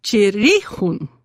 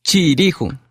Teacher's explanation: So the accent moves from the chi in chiri to the e, chirihun.